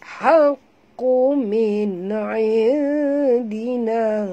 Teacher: Nun mati bertemu ain, izhar halqi, tak boleh dengung eh. Nampak ada tanda mati kat sini.